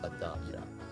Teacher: At the daira starts with a sound letter assimilation, so the L of al merges into the D, giving it crisp adaira